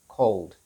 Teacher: there is no sound in between the l and the d sound